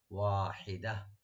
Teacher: যখন ওয়াকফ করব গোলটা হা হয়ে যাবে, সাকিনওয়ালা হা হয়ে যাবে